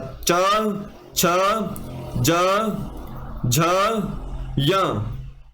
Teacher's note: ज झ य ठीक है ये आपके तालू वर्ग वाले हैं उच्चारण इनका तालू से होता है